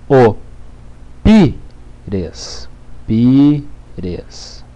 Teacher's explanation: Sílaba tônica é pi, portanto é uma paroxítona.